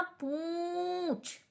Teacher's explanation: पूंछ यानी कि गले से भी आवाज आ रही है और नाक से भी, तो हम चंद्र बिंदु यानी अनुनासिक ध्वनि का प्रयोग करेंगे।